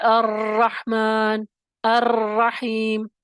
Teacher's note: را مشدد ہے، اس میں دو را شامل ہے، لیکن دو را کو ادا کرتے وقت بھی حقیقی تکرار نہیں کرنی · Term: مشابہ تکرار